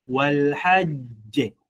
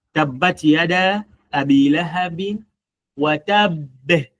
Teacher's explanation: You see mwisho wa tabb, unaikaza alafu unaiachia. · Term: strong qalqala